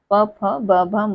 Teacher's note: यानी कि हमारे होठ आपस में स्पर्श हो रहे हैं इनके उच्चारण में। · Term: प वर्ग